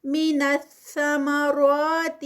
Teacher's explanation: را کے اوپر زبر ہے، تو یہ را ہیوی بھی ہوگا